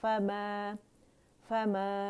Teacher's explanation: الف ممدودہ جو ہے یہ اس کی آواز کے اوپر کھینچے 2 کاؤنٹس کے لیے تو یہاں الف مد طبیعی حرکتین بن رہے مد اصلی بن